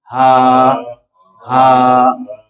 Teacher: ये हा जो है खलक के दरमियाने हिस्से से अदा होती है, हा हा, और ये जो हा है जो यहाँ आई है ये हलक के आखिरी हिस्से अक्सा हलक से अदा होती है